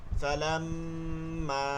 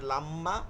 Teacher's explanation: ফালাম্মা এর জন্য আপনাকে টান দিতে হবে আপনি যখনই টানটা বাদ দিবেন এটা লাম্মা